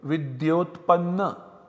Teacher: in place of A and U we get O. So we have Vidya, O and Panna.